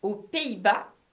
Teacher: aux, which is pronounced o for plural